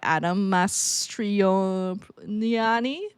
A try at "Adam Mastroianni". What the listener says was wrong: Oh no, there's no L. It's Adam Mastroianni. Adam Mastroianni.